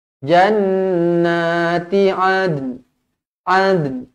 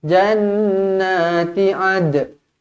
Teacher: Nun ni kena sebut juga, tapi sebahagian sahaja.